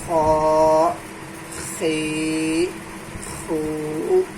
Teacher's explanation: آخری حلق سے خا ادا ہوتا ہے